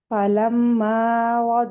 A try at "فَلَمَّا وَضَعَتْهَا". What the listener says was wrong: না গুণ বড় হবে ফালাম্মা এত বড় না 2 কাউন্টস মাদ ফালাম্মা ওয়াদাআতহা